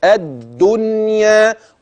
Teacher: نون ساكنه اتى بعدها ياء بس في كلمه واحده اياك ان تدغم · ادي اللام الشمسيه المدغمه في الدال